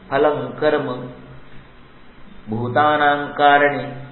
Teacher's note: इस श्लोक के दोनों पंक्तियों में आपको क वर्ग के पहले अनुस्वार मिलेगा। फलं कर्म भूतानां कारणे, तो न आना चाहिए।